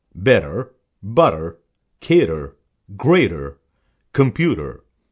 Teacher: T is pronounced as D when it occurs in the middle of a word between vowels for example better butter cater greater computer T is silent when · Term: T as D